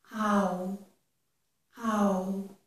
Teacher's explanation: I start with my mouth open wide, ow, but then I close it and round my lips a bit at the end.